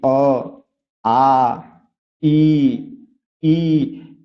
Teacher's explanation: इस वर्णों के उच्चारण में आपके जो होंठ है वो गोलाकार नहीं हो रहा है। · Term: अवृतमुखी